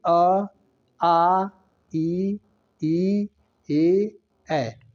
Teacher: इनके उच्चारण में होठ गोलाकार या वृत्त मुखी नहीं होते हैं।